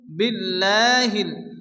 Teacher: আল্লাহ শব্দের শুরুতে জের আসলে আল্লাহর লামকে বারিক অর্থাৎ আল্লাহ উচ্চারণ করে পড়তে হয়